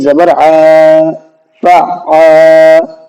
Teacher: یہاں پر الف مدہ کا قاعدہ ہے، الف آ رہا ہے اور اس سے پہلے زبر ہے، اس لیے ہم نے یہاں پر عین کو کھینچا ہے